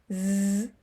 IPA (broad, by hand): z